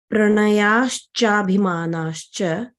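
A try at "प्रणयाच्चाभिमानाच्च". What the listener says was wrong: No, you are putting Visarga Sandhi. No sh. It is cha, cha and cha. Cha underscore cha.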